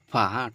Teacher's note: নিচের ঠটের পেট সামনের উপরের দুই দাঁতের আগার সঙ্গে লাগাইয়া